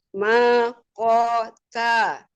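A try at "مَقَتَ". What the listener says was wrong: Nah, ini hilang tebalnya. Dikonsistenkan ketebalannya.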